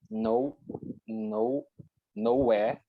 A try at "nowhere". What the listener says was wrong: Yeah, you read like no, it's a word, and where, it's another one. Nowhere. here would be two different words.